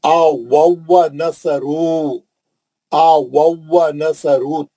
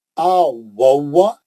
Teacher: और वाव कैसा पढ़ेंगे, गोल होंठ मुंह से दूर